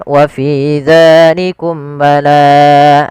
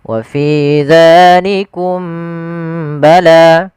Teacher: membaca ikhfa syafawi yaitu tidak menahan suara mimnya harusnya ditahan